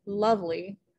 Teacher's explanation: two syllables stressed and then unstressed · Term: trochaic